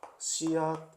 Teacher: 같은 위치에서 발음 나는 디귿으로 받침 소리가 바뀌는 거죠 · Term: 음절의 끝소리 규칙